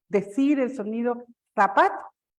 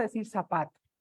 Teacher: nosotros en América en general no pronunciamos la interdental, no pronunciamos la Z. sino que lo pronunciamos todo como S. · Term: ceseo